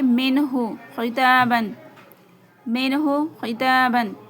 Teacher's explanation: ساکن کے بعد ہا آیا ہے تو یہاں پر ہا کو، نون کو بلا غنہ ظاہر کر کے پڑھیں گے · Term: اظہار